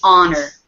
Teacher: normally we pronounce the h at the beginning of a word but not in this word